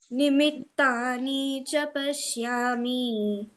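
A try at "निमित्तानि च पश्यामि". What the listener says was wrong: So what you have done, nimittani cha. So it is not tani cha. Nimittani cha. Nicha, ni should be rasa. Nimittani cha pashyami.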